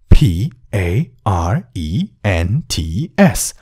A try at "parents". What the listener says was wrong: Parents हुँदैन. धेरै जसोले parents भनेको सुन्छु म. Parents नभन्नु होला है. Parents. प्या नभन्नुहोस्, अगाडि फे भन्नुहोस् ल.